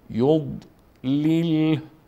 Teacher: حرف ضاد که از جمله حروف استعلاس و خیلی پر خوانده میشه